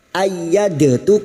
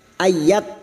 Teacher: sukun yang bertemu dengan huruf ta dua huruf yang sejenis makhrajnya memasukkan huruf yang mati kepada huruf berikutnya dengan cara menghilangkan sifat qalqalanya pada huruf Dal ini yang memiliki sifat pantulan yaitu qalqala maka sifat qqolanya hilang masuk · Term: Idam mutajanisain